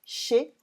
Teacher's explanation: chez is pronounced without the Z at the end, chez on its own, but because we add un after and because it agrees with the rules that I said in the liaison lesson, we say chez un antiquaire.